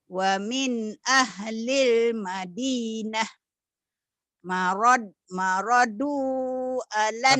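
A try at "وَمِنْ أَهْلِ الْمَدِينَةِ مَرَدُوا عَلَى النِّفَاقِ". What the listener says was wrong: Tapi nyambung ya, nyambung itu kurang nyambung. Wa min ahlil Madinah maradu alan nifaq gitu.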